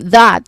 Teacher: that has a voice th sound